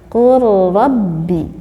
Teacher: Diidghamkanlah lam dimasukkan kepada huruf ro sehingga lamnya tidak nampak, hanya ro-nya yang kita dengar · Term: idgham mutaqarribain